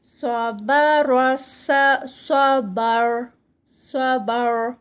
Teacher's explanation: صاد یہاں پہ صاد ہیوی اور را بھی موٹا ادا کیا جائے گا.